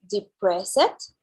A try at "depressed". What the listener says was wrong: depressed. Depressed, yes. We don't pronounce the E. Depressed.